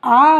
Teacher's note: ह्रस्व स्वर में तो हमें अ बोलते समय कम समय लगता है, लेकिन जब हम दीर्घ स्वर आ बोलेंगे तो उसमें क्या है, ह्रस्व स्वर की अपेक्षा दुगना समय लग रहा है